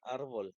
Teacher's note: Pero la palabra árbol no existe. Entonces, la sílaba tónica no es la última. En este caso, la sílaba tónica sería ar.